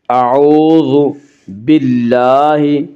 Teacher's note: باللہ میں اللہ کا لام باریک پڑھا جائے گا